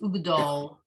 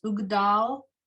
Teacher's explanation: They say it more as a o, this flat sound, as opposed to a ah, the way it's written.